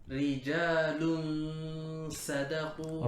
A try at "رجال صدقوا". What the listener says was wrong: Wrong. First, you're saying lun. Lun, you're making too much of like a round circle. Lun sada. You said sada. No. Rijalun so. So. Lun so. Not lun sa.